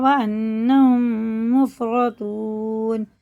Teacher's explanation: یہ میم ساکن بعد میم ہے تو یہ ادغام شفوی ہے